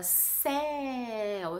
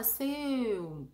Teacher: Agora, os caras pararam para pensar que quando você fala céu, sua boca está mais aberta. E quando você fala seu, sua boca está mais fechada. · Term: ditongo aberto